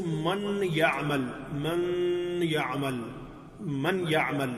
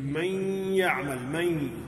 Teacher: تو نون کی آواز اور یا کی آواز کو آپس میں ہم نے ملا دیا ہے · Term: ادغام